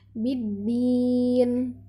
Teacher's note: Nah, di ujungnya diakhiri dengan huruf nun, dimatikan karena dia wakaf atau diberhentikan, jadi nunnya harus tetap terdengar.